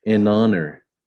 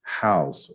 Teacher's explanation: Então, este H aqui, ele não é falado. Então, eu considero já a vogal que vem depois dele. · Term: H, mudo